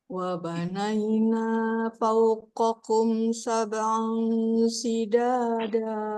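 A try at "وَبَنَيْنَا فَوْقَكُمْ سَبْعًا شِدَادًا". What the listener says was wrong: Nah, coba nanti shinnya shida ya. Nah, lebih kuat ya.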